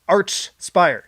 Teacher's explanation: It's Archspire with the ch sound, not the k sound.